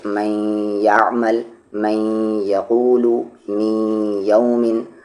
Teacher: اور اگر تنوین یا نون ساکن کے بعد یا آ جائے، واو آ جائے، میم آ جائے یا نون آ جائے، ان چاروں لیٹر میں سے کوئی ایک لیٹر آ جائے گا تو وہاں پر ادغام ہوگا، لیکن وہاں پر ادغام غنے کے ساتھ ہوگا، آواز کو ناک میں رکھ کر پڑھیں گے